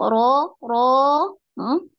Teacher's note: Naik di Ro, seperti ini ya, mengangkat ya, apa, pangkal lidah ya, seperti mengucapkan huruf qaf ya, melafazkan huruf qaf, qa ya, ro, qa, ro, ro, ro ro, ya, naik.